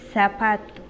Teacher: se producen cuando la lengua está entre los dientes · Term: interdental